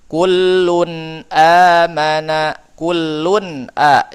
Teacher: nun sukunnya jelas ketika bertemu dengan huruf hamzah. Ini namanya idhar halqi.